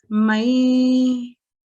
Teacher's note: In this case, we've been taught that when you see a ya mushaddad followed by a nun sakin, we have to make a nasal sound for 2 seconds, a slight nasal sound